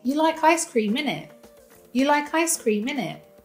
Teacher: we cut off that final T in Innit. So it sounds more like Innih.